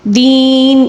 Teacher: بیوم الدین، دین یہاں پر بھی یا مدہ ہے، ٹھیک ہے، اس کو 3 الف کے برابر اس لیے کھینچیں گے کیونکہ نون جو ہے نا اس کے نیچے زیر ہے، اور جب ہم وقف کریں گے تو زیر کو ہم ساکن کے ساتھ تبدیل کر کے یا مدہ کو 3 الف کے برابر کھینچ کر پڑھیں گے